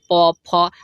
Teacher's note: प फ के जितने भी आप बोलेंगे दोस्तों तो उसमें आपका ओठ मुख्य भाग काम करेगा